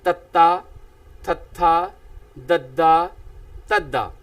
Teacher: ਤਾਂ ਇਸ ਤਰ੍ਹਾਂ ਨਾਲ ਪਿਆਰੇ ਵਿਦਿਆਰਥੀਓ ਤ ਵਰਗ ਵਾਲੀ ਸਤਰ ਜੋ ਕਿ ਜੀਭ ਦੀ ਨੋਕ ਵਾਲਾ ਹਿੱਸਾ ਦੰਦਾਂ ਦੇ ਉੱਪਰਲੇ ਦੰਦਾਂ ਦੇ ਅੰਦਰਲੇ ਪਾਸੋਂ ਜੀਭ ਜਿਹੜੀ ਹੈ ਉੱਪਰਲੇ ਦੰਦਾਂ ਦੇ ਅੰਦਰਲੇ ਪਾਸੋਂ ਜਿਹੜੀ ਹੈ ਨੋਕ ਛੂੰਹਦੀ ਹੈ ਤਾਂ ਮੂੰਹ ਦੇ ਵਿੱਚੋਂ ਇੱਕੋ ਦਮ ਜਿਹੜੀ ਹੈ ਵਿਅੰਜਨ ਉਚਾਰਨ ਕੀਤੇ ਜਾਂਦੇ ਹੈ ਤੱਤਾ, ਥੱਥਾ, ਦੱਦਾ, ਤੱਦਾ। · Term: ਦੰਤੀ ਵਿਅੰਜਨ